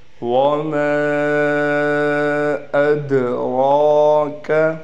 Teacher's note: دال پر قلقلہ بھی کریں گے، را پر کھڑا زبر بھی ہے اور را موٹی بھی پڑھی جائے گی، یعنی را کو ایک الف کے برابر کھینچنا بھی ہے۔